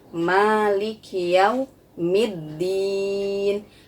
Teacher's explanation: pada huruf Ma itu dibaca panjang dua harokat